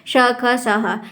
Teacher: दिन वर्णों के उच्चारण में हवा मुख से रगड़ खाती हुई, अब एक हवा है रगड़ नहीं खा रही है, एक हवा है जो मुंह से रगड़ खाती हुई धीरे धीरे बाहर निकलती है, उसको हम ऊष्म व्यंजन कहते हैं या ऊष्म संघर्षी व्यंजन भी कहते हैं।